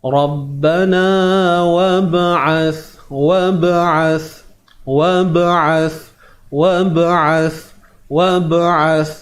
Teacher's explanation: di sini waw bertemu dengan ba yang sukun, ba yang mati. Jadi di sini terdapatnya lantunan ataupun qalqalah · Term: qalqalah sughra